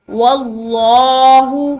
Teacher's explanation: لفظ اللہ کی لام واو کے زبر کی وجہ سے موٹی پڑھیں گے